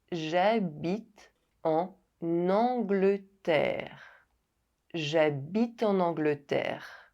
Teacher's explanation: [n] is added when the liaison is made with the final silent consonant N.